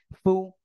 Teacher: নিচে ঠোঁটের পেট উপরে দুই দাঁতের আগার সঙ্গে লাগে একটু বাতাস বের করতে হবে